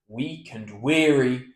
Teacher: So once upon a midnight dreary comma while I pondered comma weak and weary comma end of line so we lift the word weary because it's at the end of the line